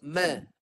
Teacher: Mim tak boleh dengung. Lepas ma baru dengung.